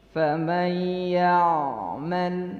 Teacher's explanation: ain itu ada di tawassut, pertengahan. Jadi tidak ditahan, tidak pula dilepas, tapi tah saja, sedikit saja. Ya. Jadi antara rokhawah dan syiddah.